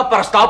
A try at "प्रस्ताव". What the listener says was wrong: अरे PARAS नहीं, PRAS, प्रस्ताव प्रस्ताव।